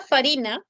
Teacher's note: El sonido de la F. ¿Cómo se llama el sonido de la F? Labiodental sorda.